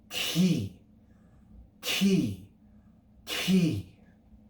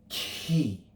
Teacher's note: we produce the sound signified by the greek letter key key key is simply the kappa sound with aspiration